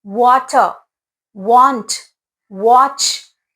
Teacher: Whenever A comes after W, the sound of A changes to the short vowel sound